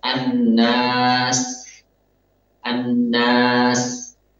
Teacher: Jadi ketika kita mengucapkan an-nas, hanya nun yang ada gunnahnya. Adapun alif, ketika berpindah kita kepada alif, gunnahnya harusnya hilang. Tidak boleh ikutan terseret gunnahnya.